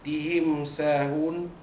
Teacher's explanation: Mim mati bertemu dengan sin, hukumnya izhar syafawi, menyatakan mim mati bertemu dengan huruf sin